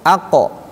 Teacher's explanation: Karena qof itu posisinya dekat dengan tenggorokan. Kalau kaf posisinya dekat ke sini, dia dekat ke lidah ke sini, ke mulut.